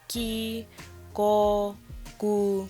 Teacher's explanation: 기역 makes a sound between a G and a K. It's like a hard G and a soft K sound. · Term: 기역 sound